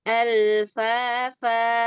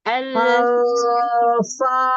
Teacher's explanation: Al, lam sukun tidak masuk ke hidung. Ya, karena lam sukun tidak ada gunnah.